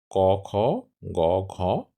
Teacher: উচ্চারিত হয় দুই জিহবা মূলীয় বা পশ্চাত তালুয় জাতীয় ধ্বনি অর্থাৎ জিহবার গোড়ায় কিংবা পেছনের তালুতে উচ্চারিত হয় অর্থাৎ জিহবার মূল এবং তালুর পেছন সহযোগে এই জাতীয় ধ্বনি উচ্চারিত · জাতীয় ধ্বনি অর্থাৎ জিহবার গোড়ায় কিংবা পেছনের তালুতে উচ্চারিত হয় অর্থাৎ জিহবার মূল এবং তালুর পেছন সহযোগে এই জাতীয় ধ্বনি উচ্চারিত হয়